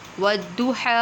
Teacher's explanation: ہا کو باریک پڑھیں گے، ٹھیک ہے، ٹھنڈی ہا نکالیں گے، موٹی والی ہا نہیں ہے